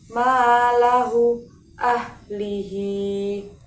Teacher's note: Mat silah qasiroh panjangnya 1 alif atau 2 harokat pada hak domir yang biasanya ditandai dengan baris depan terbalik atau baris berdiri di bawah dan didahului oleh huruf yang bertanda baris fathah atau kasroh.